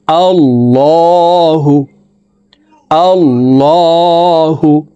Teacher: আল্লাহু, এই লামকে ল বলে পড়তে হবে, কারণ আল্লাহ শব্দের আগের হরফে জবর অথবা পেশ হইলে এই লামকে ল অর্থাৎ মোটা করিয়া পড়িতে হয়